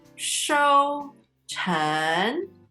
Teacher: 收 成, first tone, second tone